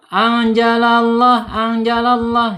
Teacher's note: Tafhim tebal. Harus ditebalkan lamnya Allah gitu ya.